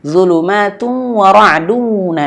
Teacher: jangan sampai wunnya tidak masuk hidung. Karena di sini terjadi hukum idgham bighunah maka wajib masuk hidung.